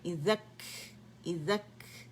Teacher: اور یہاں کاف سکون کے ساتھ ہے تو اس کا ہم نے ہمس واضح کریں.